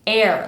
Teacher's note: we start from an e like in bed and then come up into an air.